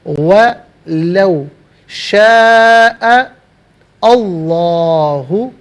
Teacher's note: وَلَوْ شَاءَ اللَّهُ ملا کر پڑھنے کی صورت میں حمزہ کو لفظ اللہ کی لام کے ساتھ ملائیں گے، درمیان سے الف یعنی حمزہ کو حذف کیا جائے گا۔ لفظ اللہ کی لام سے پہلے والے حرف حمزہ پر زبر ہے، لفظ اللہ کی لام کو پر کر کے پڑھا جائے گا۔